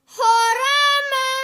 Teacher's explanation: یہ ہا باریک ہوتا ہے